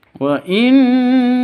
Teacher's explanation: nun tasydidnya berdiri sendiri, dengung 2 atau 3 ketukan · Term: gunnah musyaddada